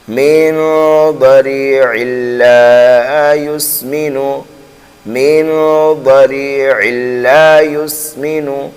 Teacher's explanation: تو یہاں ہم عین کو جو ہے لام میں ملا دیں گے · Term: ادغام